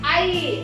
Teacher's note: अब हम इसको अगर बोलेंगे तो आई, अपने आप निकल रहा है, बोल करके देखते हैं उच्चारण में तो अपने आप निकल रहा है आई। तो ए जो हमारा है वो आ और ई से मिलकर के बना है